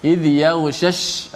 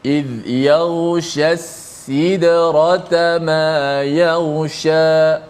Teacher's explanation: Pertama shin tengah lidah, tengah lidah. Kedua sin di hujung lidah.